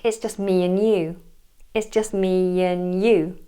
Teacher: we would often drop the D in and as well so naturally it would sound like it's just me and you · Really, we would often drop the D in and as well.